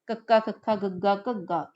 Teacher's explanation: ਜਦੋਂ ਤਾਂ ਤੁਹਾਡੀ ਕੋਮਲ ਤਾਲੂ ਨੂੰ ਸਪਰਸ਼ ਕੀਤੀ ਤਾਂ ਆਪਣੇ ਕੋਲ ਕਾਂਠੀ ਧੁਣੀਆਂ ਪੈਦਾ ਹੋ ਗਈਆਂ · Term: ਕੰਠੀ ਧੁਨੀਆਂ